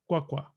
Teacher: So with qua, we have, well, since qua is CV, remember that the W is actually, the KW are one sound. It's a labialized sound, a labialized stop.